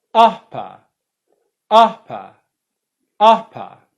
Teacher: the first syllable is the stressed one. The second syllable is unstressed, and that's where the schwa sound is.